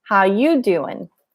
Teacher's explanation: so here you goes up and doing the G disappears it's not how are you doing